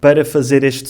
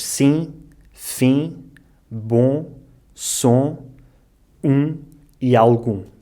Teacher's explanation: As palavras que acabam em IM, OM e UM são um pouco mais fáceis porque correspondem ao som dessa vogal, I, O, U, mas nasalado